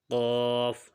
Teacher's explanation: مخرج نمبر 4، زبان کی جڑ جب کوے کے قریب سے نرم تالو سے لگے تو اس سے قاف ادا ہوتا ہے۔ قاف کیونکہ حروف مستعلیہ حروف میں سے ہے، یعنی موٹے حروف میں سے ہے، پر حروف میں سے ہے، اس کو موٹی آواز کے ساتھ پڑھیں گے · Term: موٹے والا قاف